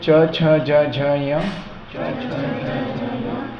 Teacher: जीहवा जो है वो तालू को मार रही है।